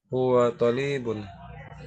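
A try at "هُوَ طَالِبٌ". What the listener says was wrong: To yang panjang. Ya, sekali lagi harus diperhatikan yang namanya panjang pendeknya.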